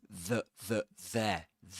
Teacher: when you say the the as in the or there there is vibration in the vocal folds. You should notice that you should feel it.